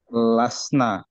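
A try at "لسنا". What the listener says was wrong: Betul, lasna ya panjang ya.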